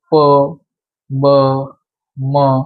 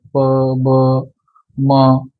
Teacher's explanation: आता हे अक्षर तुम्ही बोलताना तुम्ही स्वतः ट्राय करून बघा की हे अक्षर बोलताना आपला फक्त ओठांचा वापर होतो, जीभ नाही हलत त्याच्यामध्ये.